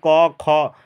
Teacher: तो कख लेटर सभी कंठ से उच्चारण होगा अब बोल के देखिए क ख आपको कंठ से आवाज निकलेगा